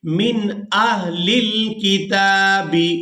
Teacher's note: تو ہم نون پر اخفا نہیں کریں گے، یعنی اس کی آواز کو ناک میں چھپا کر ادا نہیں کریں گے